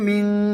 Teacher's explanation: নাকের ভিতরে গুন্না হবে, কেন? নুন সাকিনের পরে কফ এসেছে